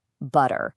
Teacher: It's what happens when a T gets kind of squished between two vowel sounds. Instead of making a sharp, hard T sound, our tongues get a little lazy. They just quickly flap against the roof of the mouth. And what you end up with is a sound that's way closer to a soft D.